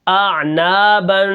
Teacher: اب یہاں پر دیکھیں اعنا، با دو زبر بن، اعنابن، یہ جو ناک میں اندر آواز جا رہی ہے ناک کے اندر، اس کو نون تنوین کہتے ہیں، اور نون تنوین کے اندر غنہ کرنا ضروری ہے۔